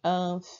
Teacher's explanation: De novo, a fi durou mais. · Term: paroxítona